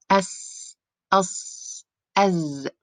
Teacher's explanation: This describes the sharp sound of the exhale, which carries their sounds during its coming out from in between the front teeth. As you know, the spaces in between the front teeth are actually so tight or so narrow, which gives the sound sharpness. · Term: the whistle